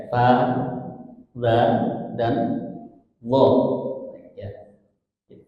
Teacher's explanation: Jadi sama dia makhrojnya dengan ta dan D sama-sama di nempel di gigi atas ujung lidah kita ya